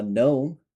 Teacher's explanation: you can just clearly see that you are not pronouncing the G. It's just not there.